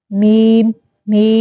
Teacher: मीम दोनों होठों की बैरून तरी के मिलने से